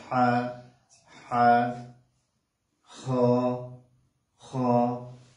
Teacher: আর জিহ্বার মধ্যখান বা মাঝখান থেকে বললে এটা হচ্ছে জিম। তারপরে হা, কণ্ঠনালীর মধ্যখান, হা চাপ দিয়ে পড়তে হবে